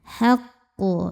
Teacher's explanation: Nah ini termasuk qalqalah kubra karena qalqalahnya itu ada di akhir. Suknya itu karena berhenti dibacanya memantul. Pantulannya besar. · Kemudian di sini juga ada alif lam namanya alif lam qamariah. Karena alif lam menghadapi huruf qamariah yaitu ha maka lam dibaca jelas. Haqu. Nah ini termasuk qalqalah kubra karena qalqalahnya itu ada di akhir.